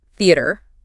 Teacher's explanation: Make sure you're emphasizing the first syllable.